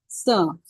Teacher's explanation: और जो र के जैसा लिखते हैं स उसको बोलते हैं दंत स मतलब दांत से उसका उच्चारण होता